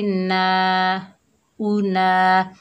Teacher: नून के ऊपर ज़बर है, आगे अलिफ खाली है, ये अलिफ मद्दा है, एक अलिफ की मिकदार खींचकर पढ़ेंगे